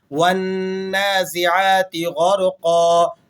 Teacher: والنازعات غرقا، قوف کے اوپر 2 زبر کی تنوین ہے، اور 2 زبر کی تنوین پر جب آپ وقف کرتے ہیں تو یہ الف سے تبدیل ہو جاتی ہے · والنازعات غرقا، غین اور را دونوں موٹے حروف ہیں تو دونوں کو آپ نے اچھے طریقے سے موٹا کر کے ادا کرنا ہے، اور قوف پھر موٹا حرف آ گیا تو قوف کو بھی آپ نے پر کر کے ادا کرنا ہے